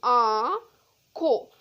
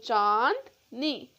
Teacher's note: चंद्र बिंदु को अनुनासिक कहते हैं क्योंकि इसकी साउंड नोस और मा दोनों से प्रोनाउंस होती है